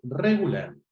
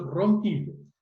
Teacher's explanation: a pesar de que lo escribimos con una sola, el sonido es vibrante múltiple, es regular, no es regular.